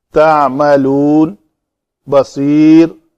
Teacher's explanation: صاد پور پڑھیں گے، پتلا نہیں ہوگا کیونکہ پتلا کریں گے تو سین بن جائے گا